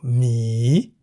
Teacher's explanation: Mi begins with a high-class consonant ho heb, and therefore based on the tone rules for a live syllable, mi is in the rising tone